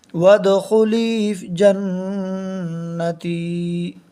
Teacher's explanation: نون مشدد کی آواز کو ایک الف کے برابر ناک میں روک کر پڑھیں گے۔ نون کے اوپر زبر ہے، زبر کو جلدی پڑھیں، تھوڑا بھی نہ کھینچیں۔